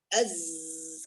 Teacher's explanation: Suara khusus yang tajam seperti suara burung itu sofir namanya.